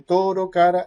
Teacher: esta forma alveolar vibrante simple o percusiva sonora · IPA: /ɾ/